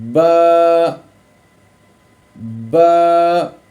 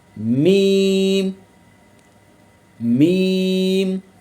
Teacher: اس کے بعد ہے جی میم، تو میم جو ہے وہ بند ہونٹوں کے خشک حصے سے ادا ہوگا، با جو ہے وہ بند ہونٹوں کے گیلے حصے سے اور میم خشک حصے سے